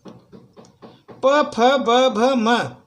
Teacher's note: यह दोनों ओठों के उच्चारण से मिलती है सर। जब तक आपके दोनों ओंठ मिलेंगे नहीं सर, तब तक इसका उच्चारण नहीं होता। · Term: ओठव्य